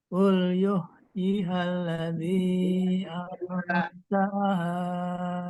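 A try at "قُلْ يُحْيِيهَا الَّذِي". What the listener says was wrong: Yuhyi, Pak, dua. Panjangnya. Qul yuhyi halladzi.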